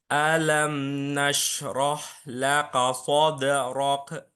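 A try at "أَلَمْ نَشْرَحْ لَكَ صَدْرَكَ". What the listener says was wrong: Nah, K-nya jangan tebal. Lako, laka, laka, soderok. Terus ini hanya udara. Soderok, jangan sampai mantul. Soderok, tapi soderok hanya udara.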